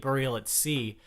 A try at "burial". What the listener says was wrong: It's a U. It's a U, not an A. It's a U. Burial. There's no A in that beginning part of that word.